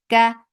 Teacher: There is no hams in kaf when kaf is with fatha, dhamma or kasra.